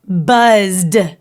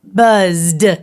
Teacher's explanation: sound the d sound buzz can you touch your throat and feel how the d sounds a lot more voiced than the letter t and it vibrates quite a bit more